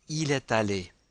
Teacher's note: And we link est allé because aller begins with a vowel.